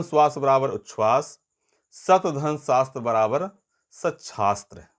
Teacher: यदि त के बाद स आता है तो त च में परिवर्तित होगा और स छ में।